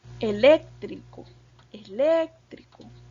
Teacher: tiene el acento en la antepenúltima